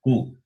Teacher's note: ku is the combination of the sound that is guttural and labial. The sound comes from the throat and also from the lips.